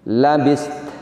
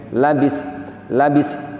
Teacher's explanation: ketika waqaf kita mensukun 2 huruf terakhir. Kita sukun huruf taknya, juga disukun huruf taknya.